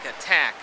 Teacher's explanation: The aspirated one is found in the beginning of words like time and at the beginning of a stressed syllable like attack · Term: aspirated T